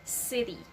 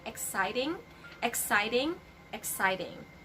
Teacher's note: this letter t that is not pronounced very strongly in the middle of the two vowels and again the sound becomes letter d instead of letter t